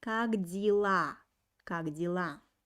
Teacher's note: When you pronounce как дела, try to make e sound very, very soft. It's pronounced like и.